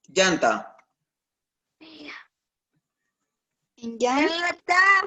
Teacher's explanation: Tiene la mayor fuerza de voz en yan.